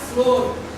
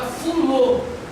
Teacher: Nas letras F e L vão receber a vogal U entre si, o que resulta da palavra fulô, sem o R, final em função do que explicamos acima, que seria na página anterior.